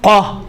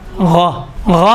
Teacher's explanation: فرق ہے کہ قاف میں موٹائی ہے، غین میں نرمی ہے، تھوڑا سا نرم سے ادا ہوتا ہے۔ غین میں دیکھیں قا، غا، غا میں تھوڑا سا نرمی ہے، قاف میں تو موٹائی زیادہ ہے، تھوڑا سختی ہے۔